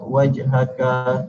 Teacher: Menunjukkan qalqalah sughra iaitu hanya membunyikan huruf ja mati dengan bunyi huruf ja mati secara halus, iaitu wajhaka dan seterusnya.